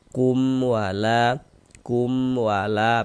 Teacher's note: Maka ini hukumnya adalah izhar syafawi. Maka kita baca jelas dan tak berdengung. Baca pendek saja. Kum wala kum wala pendek.